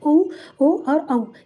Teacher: ऊ ओ और औ ये ओष्ठ यानी लिप्स से निकलता है